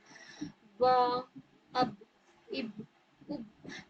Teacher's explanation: ब में क्या होगा कि हम होठों के गीले हिस्से को जब दोनों होठ को मिलाएंगे ऊपर के होंठ और नीचे के होठ दोनों के गीले हिस्से जब मिलते हैं तब ब की अदायगी होती है।